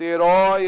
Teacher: Herói é o o aberto